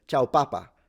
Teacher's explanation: But the stress is at the end, P-A-P-A with an accent. But she always says, ciao papa, and she stresses it at the beginning